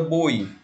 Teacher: nós temos uma vogal e uma semivogal do maior para o menor decrescente · Da maior para menor, eu tenho um ditongo decrescente. Na palavra boi, nós temos uma vogal e o I é uma semivogal